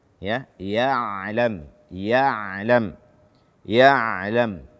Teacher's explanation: ain dia tidak syiddah dan dia tidak rikhwah, namun dia adalah bainiyah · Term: ain sukun